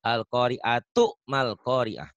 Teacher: Kalau enggak dihentikan tidak ada ta marbut, tidak ada bunyi ha, adanya tetap ta.